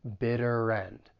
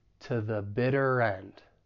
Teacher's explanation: to sound like ta and the weak article the and then we can link the final consonant sound in bitter with the beginning vowel sound and end Bitter End so it's going to sound like to The Bitter